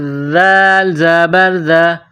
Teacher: ذال، زبان تھوڑی باہر نکالیں گے، ذال کو نرم پڑھیں گے